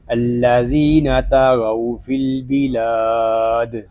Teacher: وقف میں قاعدے ہوں گے مد عارض، دال ساکن میں کلکلا